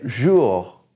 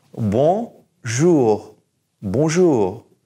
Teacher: So we're going to say jou, and then we're going to push that R to the very back of our mouth. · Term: the R back here